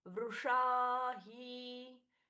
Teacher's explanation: वृषा ही, अब ये श थोड़ा गड़बड़ हो गया ना। वृषा ही श षटकोण वाला है, तो मूर्धन्य श उच्चारित होना चाहिए। वृषा ही अच्छे से दीर्घा।